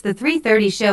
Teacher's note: Notice the emphasis on 3:30.